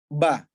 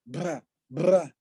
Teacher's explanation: Al-jahar misalnya, kita baca huruf ba. Ba kan nggak boleh kita baca keluar udara. Bra, nggak bisa.